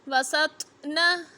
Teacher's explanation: طوا حرف قلقلہ ہے تو قلقلہ کریں گے